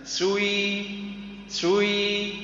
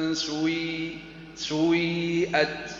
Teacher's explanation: مذهب الافراز نبدا بالضم ثم نرجع الى الكسر